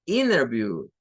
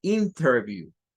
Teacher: es algo que suele ocurrir en la pronunciación norteamericana donde hay una nt la t se deshacen de ella y le meten otra n más entonces van a escuchar ustedes decir innervible en vez de interview